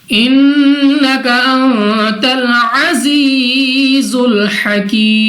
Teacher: नून साकिन के बाद ता हरूफ इख्फा में से है, इख्फा का कायदा गुन्ना करके पढ़ा जाएगा। जा सख्ती से अदा होगा। · या मद्दा को मद्दे आरिज के साथ बदल कर 2 नहीं बल्कि 3, 4 या 5 सेकंड तक खींचकर पढ़ा जाएगा।